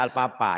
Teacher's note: Nah ini penyakit saya, penyakit orang Sunda alpapa ya. P, F-nya ke P ya. Harusnya F.